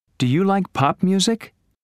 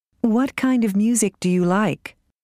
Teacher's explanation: Yes-no questions usually have rising intonation. WH questions usually have falling intonation. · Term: Intonation in questions